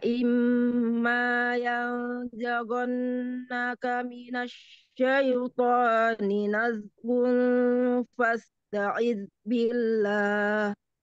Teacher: Yang zaghu ditebalkan, kemudian ada juga nazghu, nah itu juga tebal.